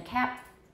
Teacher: that stop that final stop will be unreleased